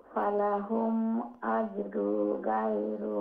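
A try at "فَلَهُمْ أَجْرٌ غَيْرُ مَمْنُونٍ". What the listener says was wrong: আজরুন নেই, আজরু নয়, আজরুন। রুন নুন সাউন্ড শোনা যাবে, কিন্তু ওইখানে নাক দিয়ে সাউন্ড যাবে না। আজরুন এইরকম হবে না, আজরুন গায়রু এইরকম।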